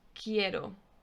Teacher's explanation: word queen or the word quiet quite quiet it's q u in spanish you don't pronounce the u it's just a k sound